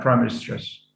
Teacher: the primary stress falls on the first element